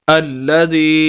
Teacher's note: ज़ाल ज़ेर या मद ज़ी, अल्लज़ी, ये मद की अलामत है। छोटी मद इसे बोलते हैं, कम खींचना है बनिस्बत बड़ी मद के, और ज़ाल को या के साथ मिलाएंगे क्योंकि या साकिन है।